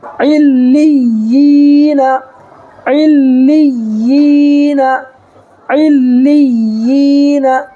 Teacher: دیکھیے یہاں لام کے نیچے کیا ہے؟ لام پر تشدید ہے، ٹھیک ہے، تو عین کو لام میں ملانا ہے، پھر آگے یا پر بھی تشدید ہے تو لام کو پھر یا میں ملانا ہے، ٹھیک ہے، اور پھر یا کے بعد دوسرے یا میں جو ہے ساکن ہے تو پھر یہاں بھی یا کو یا سے ملانا ہے، اس لیے کہ ساکن ہے، ٹھیک ہے۔